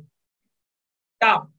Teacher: टा बोलने के लिए आपकी जो जुबान है वो तालु से कैसे टकराती है, ऐसे मुड़ के टकराती है, ये टा, इसे बोलते हैं मूर्धा।